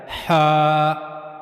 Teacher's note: एक बिल्कुल ऊपर वाला यानी मुंह की तरफ वाला एक गले का दरमियानी हिस्सा और उसके बाद तीसरा है गले का सबसे निचला हिस्सा सीने की तरफ। तो हा जो है वो गले के दरमियाने हिस्से से अदा किया जाता है। हा तो हा को पढ़ने के लिए और हा को अदा करने के लिए गले के दरमियाने हिस्से का इस्तेमाल किया जाएगा। · ہا جو ہے وہ گلے کے درمیانی حصے سے ادا کیا جاتا ہے، ہا۔ تو ہا کو پڑھنے کے لیے اور ہا کو ادا کرنے کے لیے گلے کے درمیانی حصے کا استعمال کیا جائے گا، ہا، ہا، ہا۔